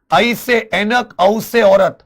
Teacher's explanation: आधा खुला हुआ मुख ये आ जाते अर्ध विवृत